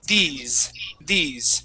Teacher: that s is going to sound more like a z so when we pronounce that word it's these these try that